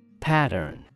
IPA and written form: ˈpætərn (pattern)